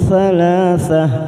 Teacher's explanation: Kita samarkan bunyi fathah tanwin 3 ketuk. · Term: ikfa hakiki